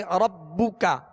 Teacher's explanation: با پر صرف پیش ہے تو اس کو بغیر کھینچے پڑھیں گے اور معروف طریقے سے ہونٹ گول کر کے پڑھیں گے